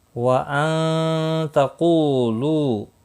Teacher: قو واو مدہ ہے، لو بھی واو مدہ ہے، ایک ایک الف کے برابر کھینچ کر پڑھیں گے